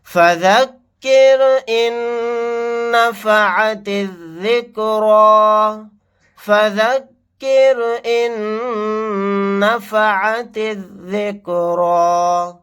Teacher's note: یہاں پر رائے ساکنہ کو باریک پڑھیں گے کیونکہ رائے ساکنہ سے پہلے زیر ہے. یہاں پر نون کے اوپر تشدید ہے، غنہ کر کے پڑھیں گے.